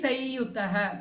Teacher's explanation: samyutaha becomes sayyutaha in anuswara rule